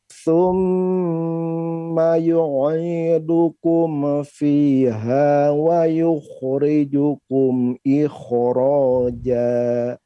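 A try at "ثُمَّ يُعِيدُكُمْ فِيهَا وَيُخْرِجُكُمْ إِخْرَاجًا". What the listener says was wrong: Ya, afwan, coba mimnya agak mantul lagi pada dat ya. Wa thumma yu'idukum fiha. Kum, tidak.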